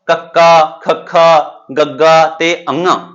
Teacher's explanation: ਕੰਠੀ ਧੁਨੀਆਂ ਹੁੰਦੀਆਂ ਨੇ ਜਿਹੜੀਆਂ ਕੰਠ ਦੇ ਵਿੱਚੋਂ ਉਚਾਰੀਆਂ ਜਾਂਦੀਆਂ ਨੇ